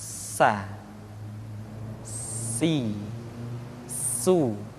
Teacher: Di antara sifat yang menonjol ketika kita mengucapkan huruf sa atau huruf sin adalah sifat as-safir, di mana ketika kita mengucapkan huruf sa ada suara tambahan yang menyerupai dengan suara belalang.